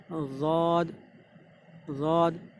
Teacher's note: ज़बान की जो साइड का हिस्सा है सीधी तरफ का, वो आप दाढ़ों की तरफ लगाएंगे तो वहाँ से ज़ाद निकल रहा है